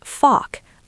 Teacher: In British English, we don't pronounce the r strongly. It's fock, long vowel.